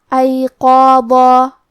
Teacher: قاف کے بعد مد الف ہے اور مد الف اپنے پیچھے والے حرف کا حکم لیتا ہے تفخیم میں اور ترقیق میں، لہذا ہمیں مد الف کو بھی بھاری آواز میں پڑھنا ہے · قاف کو ہم زبان کے جڑ اور تالوں کے نرم حصے سے ادا کریں گے. قاف حروف تفخیم میں سے بھی ہے تو ہم یہ حرف کو موٹی آواز میں پڑھیں گے.